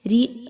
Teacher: را کے نیچے زیر ہے، اس لیے اس را کو باریک پڑھا جا رہا ہے